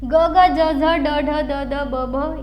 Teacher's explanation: मृदूचा उच्चार करताना आपल्याला त्याचा आवाज झाल्यासारखा वाटतो घोष केल्यासारखा वाटतो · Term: मृदू व्यंजन